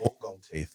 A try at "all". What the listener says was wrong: Old gold? All gold. All gold. You know, you say oil. Like you're saying oil from the South. That's how they say oil. Like, we're going down to the oil rig. Oil. Oil.